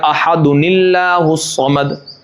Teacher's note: اب اگر ملائیں گے تب جا کے آپ کو پڑھنا پڑے گا احد اللہ الصمد، کیونکہ احد تھا، اور اللہ میں حمزہ کے لام کے اوپر یہ جو لام حمزہ ہے، جو لام سے پہلے یہ حمزہ وصلی ہے، اس وجہ سے وہ گر جائے گا اور ہو جائے گا احد اللہ الصمد. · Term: نون قطنی